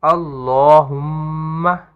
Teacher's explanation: ہم کے اندر غنہ کریں گے